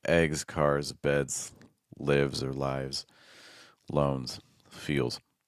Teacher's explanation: So again our voice of sounds s at the end it's like books eats helps makes likes surfs voice sounds so again these g's rs d's these are voice sounds so those s's will be voiced